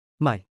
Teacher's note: Low tone, low, falling slightly.